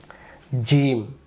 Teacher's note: এই জিম অক্ষরটা জিহ্বার মাঝখান থেকে উচ্চারিত হবে